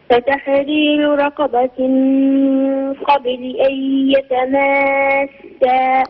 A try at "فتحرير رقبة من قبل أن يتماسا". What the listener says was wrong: مازال المد أطول. مازال المد أطول لأن هذا مد لازم. يتماسا ست حركات.